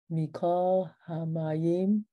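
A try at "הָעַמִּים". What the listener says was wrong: The same letters as Hamayim, but they're in a different order. Ha-amim, yep.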